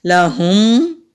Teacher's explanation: لہم، ہا کو حلق سے نکالیں گے، لام کو لمبا نہیں کریں گے۔ اگر لام کو ہم لمبا کریں گے تو میننگ بالکل الٹ ہو جائیں گے، تو جلدی سے لام کی ادائیگی کرنی ہے۔